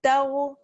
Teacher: ता बारीक और गैन जो है वो मोटी पड़ी जाएगी, ता गैन जबर तगो।